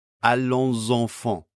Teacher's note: We get liaison between these first two words, so the final S of allons is pronounced as a voice sound before enfant.